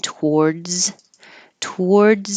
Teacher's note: you're going to lose your voicing after the Z